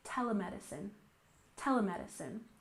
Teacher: tele medicine with stress on the first syllable